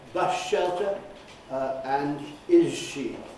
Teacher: we change the s to esh and we change the z to j in things like bus shelter and is she